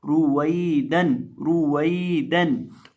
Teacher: अगर या साकिन से पहले ज़ेर हो तो या को फिर खींचते हैं, अगर या साकिन से पहले ज़बर आ जाए या वाव साकिन से पहले ज़बर आ जाए तो फिर उनको बतौर हरूफे लीन पढ़ा जाता है, उनको नरमी के साथ पढ़ा जाता है। तो यहाँ हम या को नरमी के साथ पढ़ेंगे, रुवैदन, और बिना खींचे पढ़ेंगे, लंबा नहीं करेंगे, और वाव को पढ़ते वक्त होंठों को गोल करके पढ़ेंगे